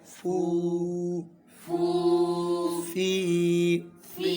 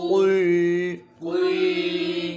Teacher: فا کا ہونٹ ہے اور قاف کا زبان کی جڑ ہے